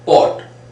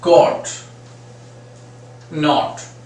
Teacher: a hitting, short, stressed sound of O, denoted by A written upside down. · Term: stressed O sound